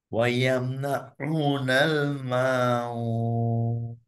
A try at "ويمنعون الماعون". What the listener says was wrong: লাস্টের নুনটা কিন্তু একটু কম আসতেছে, হ্যাঁ, একটু খেয়াল করো। ويمنعون الماعون.